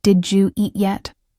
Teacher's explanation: The D sound from did and the Y sound from you merge.